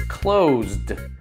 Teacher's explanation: the s gets a voiced z sound therefore the e d has a d sound